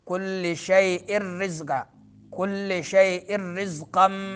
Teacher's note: رزقاً میں زا سیٹی والا حرف ہے